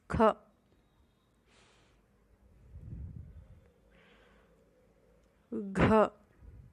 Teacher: ಮಹಾಪ್ರಾಣ ಅಕ್ಷರಗಳು ಅಂದರೆ ಹೆಚ್ಚು ಉಸಿರಿನಿಂದ ಅಥವಾ ಎರಡು ಮಾತ್ರಾ ಕಾಲದಲ್ಲಿ ಉಚ್ಚರಿಸಲಾಗುವಂತಹ ಅಕ್ಷರಗಳು